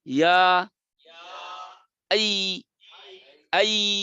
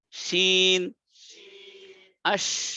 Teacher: আর ইয়া নরম আছে, বাতাস নাই। শিন নরম আছে, বাতাস আছে।